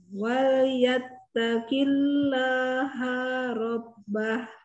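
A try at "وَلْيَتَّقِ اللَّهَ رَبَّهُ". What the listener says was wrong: Hanya kepanjangan, Bun. Jangan panjang-panjang. Wa yattaqillaha rabbah.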